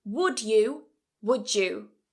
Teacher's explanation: we connect them together and add, well, change that sound there and say J instead of D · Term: assimilation